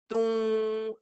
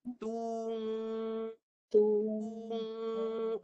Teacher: Yang betulnya dua bunyi. Satu mulut, baru hidung.